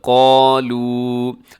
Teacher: قاف اس میں آپ نے موٹا رکھنا ہے، اور ساتھ الف جو ہے وہ بھی موٹا ہوگا، قالو۔ اب آگے جو مد ہے وہ مد منفصل ہے، اسے لمبا کیجیے گا 4 سیکنڈ۔